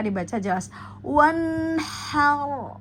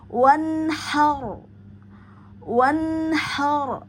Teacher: nun sukun bertemu dengan ha maka dibaca jelas